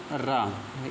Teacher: रा जब हम बोलते हैं तो क्या होता है, जुबान जो हमारी प्रकम्पित होती है ना, कंपन होता है ना जुबान में। तो रा को हम क्या कहते हैं, प्रकम्पित, या रा को प्रकम्पित रा को प्रकंपित या लुंठित वर्ण बोला जाता है।